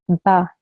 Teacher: And then, as I've told you, the slanted stroke is called in Arabic fatha, okay? Because of this fatha, this ba sound, this ba letter will be pronounced for only 1 second.